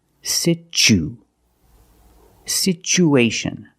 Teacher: the second syllable is the long oo like Boot and moon